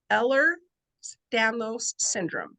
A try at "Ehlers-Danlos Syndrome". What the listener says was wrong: Yeah, Ehlers-Danlos Syndrome has an S at the end of Ehlers.